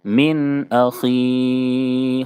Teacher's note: من اخی، نون ساکن کے بعد حروف حلقی کے 6 حرفوں میں سے حمزہ ہے، اس لیے اظہار حلقی ہوگا، یعنی نون کو ظاہر کر کے فوراً آگے بڑھ جائیں گے، نون میں غنہ اور اخفا نہیں کریں گے. من اخی، خا کو مکمل پر پڑھیں، کیونکہ خا حروف مستعلیہ کے ساتھ حرفوں میں سے. میں نے بتایا کہ حروف مستعلیہ جو ہوتے ہیں اگر ان کے نیچے زیر ہو تب بھی اس کو پر پڑھا جاتا ہے.